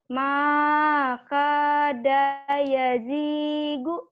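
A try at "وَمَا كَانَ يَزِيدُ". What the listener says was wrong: Maka daknya pendek.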